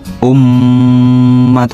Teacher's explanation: dengan menutup kedua bibir bersamaan dengan didengungkan secara nyata ke pangkal hidung selama 2-3 harokat. Dilakukannya penutupan bibir karena makhraj mim terjadi apabila kedua bibir dalam keadaan tertutup. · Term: mim musyaddadah